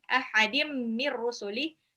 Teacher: tanwin ketemu sama mim itu idgham bi ghunnah, mir rusuli nun sukun ketemu ra, idgham bila ghunnah.